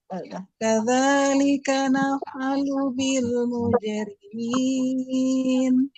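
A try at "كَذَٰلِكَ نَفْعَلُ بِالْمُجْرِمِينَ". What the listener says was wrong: Nah, yang awalnya kurang naik Bu sedikit. Kadzalika naf'alu bil mujrimin gitu.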